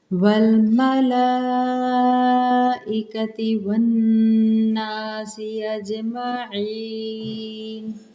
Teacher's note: اوپر مد متصل کا قاعدہ ہے، حمزہ آ رہی ہے، 4 سے 5 حرکات ہم نے کھینچ کے پڑھنا ہے